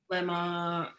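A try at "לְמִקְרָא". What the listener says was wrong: Not ma. The one dot. Lemik.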